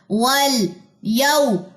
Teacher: वल, यौ, वाव खाली मा कबल जबर, इसे कहते हैं वाउलीन, इसको नरमी से पढ़ते हैं और इसकी जो ड्यूरेशन है वो 1.5 सेकंड होती है